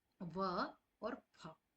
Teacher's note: नीचे का होठ और ऊपर का दांत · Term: दंतोष्ठ